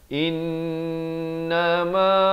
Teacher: in itu wajibul gunnah dengungkan 2 harakat, ma dipanjangkan 2 harakat.